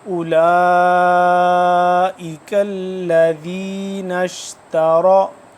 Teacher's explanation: حمزہ پیش او، حمزہ پیش او، لام کھڑا مد زبر لا، تقریباً 4 الف کے برابر اس کو مد کو لمبا کرنا ہے۔